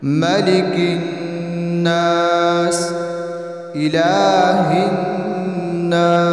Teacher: دونوں نون میں ہم غنہ کریں گے، ناک میں آواز لے جائیں گے